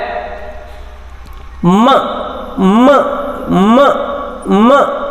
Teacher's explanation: examples ನೋಡೋದಾದ್ರೆ ಮ ಮ ಮ ಮ ನೋಡಿ, ಬಾಯಲ್ಲಿ ಬರಲ್ಲ ಏರು, ಸೊ ನಾವು ಮೂಗಿನಿಂದ ಹೊರ ಹಾಕ್ತೀವಿ ಆ ಏರ್ ಸ್ಟ್ರೀಮನ್ನ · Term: ನೇಸಲ್ ಸೌಂಡ್ಸ್